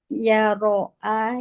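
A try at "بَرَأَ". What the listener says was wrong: Baro'a, iya baro'u. Ba, pakai ba itu. Baro'a, iya baro'u.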